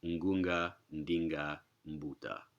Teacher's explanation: Well, so this is just showing that suku has the denasalization process. You put a voiced stop after the nasal prefix, the shaking, the searching, the testifying, you get out prenasalized stops.